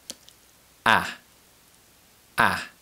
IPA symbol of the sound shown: æ